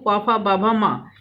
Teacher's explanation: ओठ से बोलते हैं इसलिए ओठ व्यंजन कहलाते हैं